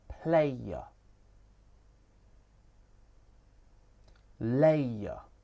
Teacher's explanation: This moves from the a diphthong to the schwa. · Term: triphthongs